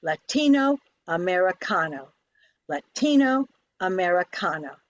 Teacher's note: Now the third word has 3 accents. The first and third accents are strong, and the middle one is soft.